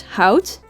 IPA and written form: hɑut (Hout)